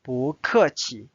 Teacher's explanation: Notice again, this change to the second tone because this 客 is a fourth tone.